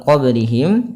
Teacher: ba memiliki Salah satu sifat sifat yaitu Qalqalah Qalqalah artinya apa memantul maka di dalam melafalkan m ini harus ada pantulannya ya kesalahan